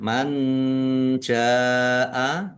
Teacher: Ya, baik, kita lihat tajwidnya. Man jaa, nun sukun bertemu dengan huruf jim. Bacaan ikhfa dibaca samar-samar. Jim fathah alif mat tabi'i, tetapi karena bertemu dengan huruf hamzah dalam satu kata, maka menjadi mat wajib muttasil.